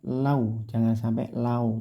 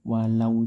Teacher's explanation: jangan sampai Lau tidak o tapi u